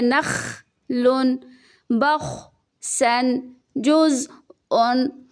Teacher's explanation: یہاں پہ ہم جھٹکا نہیں دیں گے، یہاں پہ اس طرح تلفظ نہیں کریں گے جیسے کہ نخ نخ، بلکہ یہاں پہ بالکل کلیئرلی اپنے ساؤنڈ کو سٹاپ کریں گے